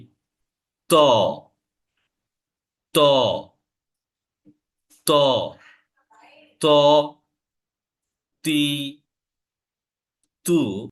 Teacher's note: উপরের জিহবার আগা উপরের অংশ যেটা আছে আমাদের যে মাড়ির যে উপরের অংশ এটার সাথে আমাদের জিহবার যে আগা সেটা লেগে যাবে